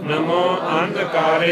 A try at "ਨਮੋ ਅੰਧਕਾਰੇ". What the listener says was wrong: ਐੜੇ ਤੇ ਟਿੱਪੀ ਆ ਜ਼ੋਰ ਲਾ ਕੇ ਬੋਲਣਾ। ਨਮੋ ਅੰਧਕਾਰੇ